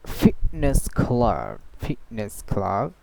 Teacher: So this kind of T sound, it's called glottal T. Okay, so she says fitness, not fitness.